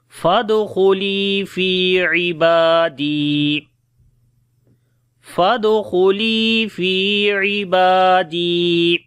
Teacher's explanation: خا کو موٹا پڑھیں گے، لام کو لمبا کریں گے، یا مدہ ہے ، فادخلی فی عبادی، فی کو لمبا کریں گے، یا مدہ · فادخلی فی عبادی، فا کو دال کے ساتھ ملائیں گے، فد، دال کے اوپر قلقلہ کریں گے، کمزور قلقلہ ہوگا